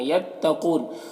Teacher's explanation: قاف حروف مستعلیہ میں سے ہے، پر پڑھیں گے